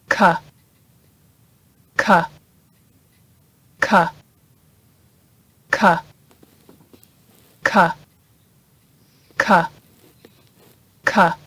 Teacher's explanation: The sound K is unvoiced, meaning your vocal cords don't vibrate when producing the sound. Your tongue also sits at the bottom of your mouth when pronouncing the sound K.